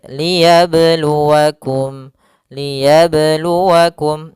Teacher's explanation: tidak boleh ada tambahan hamzah ataupun berhenti akan tapi dia mengalir